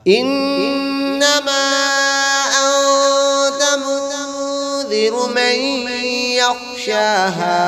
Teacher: انما پہ نون مشدد ہے اس لیے غنہ ہوگا